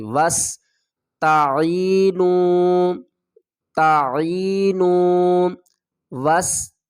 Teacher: واو کو سین سے ملائیں گے، سین کے اوپر سیٹی کی آواز آئے گی